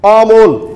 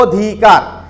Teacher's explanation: এখানে দেখো আমরা উচ্চারণ করছি অমল, আমরা কিন্তু অকে তখন স্বাভাবিক ঠোঁটটা ফাঁকা করে উচ্চারণ করছি, কিন্তু অকে যখন আমরা ও এর মতো উচ্চারণ করছি তখন ঠোঁটটা সংকুচিত হয়ে যাচ্ছে, অধিকার। এই যে সংকুচিত অবস্থাকে আমরা বলছি সংবৃত উচ্চারণ, আর যখন স্বাভাবিক উচ্চারণ হচ্ছে সেটিকে আমরা বিবৃত উচ্চারণ বলছি।